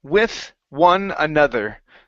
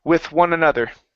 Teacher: Okay, let's try those th sounds here with one another. So we have a unvoiced th on with and a voiced th on another